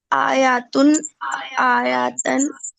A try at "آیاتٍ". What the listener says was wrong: آیا تن بول رہی ہیں اور آپ کہہ رہی ہیں دو زبر آتی نہیں ہیں.